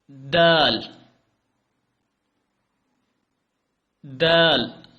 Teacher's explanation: دال دال۔ دال پڑھنے کے لیے آپ کو اوپر والے دانتوں کے پچھلی سائڈ پہ زبان لگانی پڑے گی